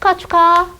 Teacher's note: 기역과 히읗이 만나서 뭐가 됐다? 거센 소리인 카가 됐다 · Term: 자음 축약